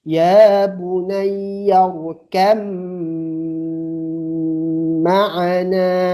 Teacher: Jadi ba-nya kemana? Ba-nya hilang. Karena kita langsung ke mim. · Karena ba dan mim tempat keluarnya sama, maka kita langsung fokus ke mim saja. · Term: idgham mutajanisain